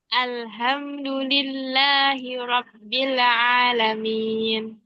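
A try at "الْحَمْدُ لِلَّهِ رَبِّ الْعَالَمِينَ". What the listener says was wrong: Masih mantul itu di bilnya. Jangan dipantulkan. Robbil.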